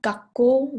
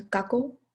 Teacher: you have like your throat stopped there a little bit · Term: geminates